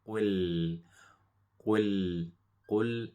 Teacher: When we say the qaf, make sure you round the lips, qa, qa. And the lam is light, so when we say a lam, make sure we smile